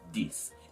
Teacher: the th is removed and then a d is replaced